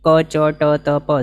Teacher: પ્રાણ પૂરવાની જરૂર નથી મોઢામાંથી વિશેષ પણે હવા નીકળે એવી કોઈ જરૂર નથી